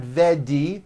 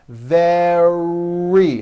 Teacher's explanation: Make sure that the R sound is strong and your lips are coming forward. Your tongue is back and you push out the R.